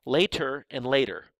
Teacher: Now, that can be contrasted with the sounds in the word later with a T sound, or later, with that sound that's almost like a D where your tongue just goes up and hits the ridge of bone behind your teeth. That's called a flap.